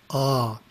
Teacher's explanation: the first syllable is a pronounced as the english word ah but prolonged